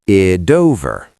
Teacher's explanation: >> It ends in T and over begins in O. >> Link it with a flap T. American style.